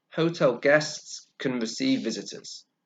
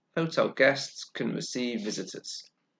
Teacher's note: in affirmative can becomes the weaker sound